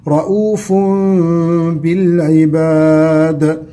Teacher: رؤوف بتنوين بالضم مقلب إلى ميم ثم تخفى الميم عند ملاقاتها للباء، حكم الإقلاب.